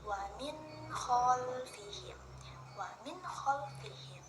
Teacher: Nun mati bertemu dengan ko. Nah, itu jelas ya. Jadi kita membacanya jelas. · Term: izhar